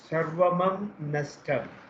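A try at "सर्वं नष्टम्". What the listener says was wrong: No, sarvam only. Sarvam nashtam. Question is, will halanta makara become a bindu now? It will.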